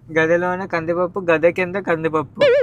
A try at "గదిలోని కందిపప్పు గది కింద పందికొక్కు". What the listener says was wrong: ఎందుకు 2 కందిపప్పు వస్తున్నాయి? పందికొక్కు కందిపప్పు.